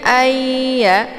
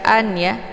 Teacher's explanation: Nun ini tidak lagi Dibaca tapi langsung dileburkan ke dalam huruf Ya sambil ditahan sehingga terbentuk suara yang mendengung lebih kurang dua harakat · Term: Idgham Bi ghunah